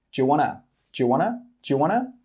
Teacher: We don't say 'do you'. It becomes 'juh'.